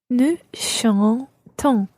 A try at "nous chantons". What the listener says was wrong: So basically what you're doing is putting that second sound further forward in your mouth. It's chantons. Yeah, stick your lips forward as you're doing the on part. On. As opposed to en. So we've got chantons.